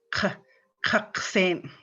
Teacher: It just has that guttural with like a H following it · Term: underlined K's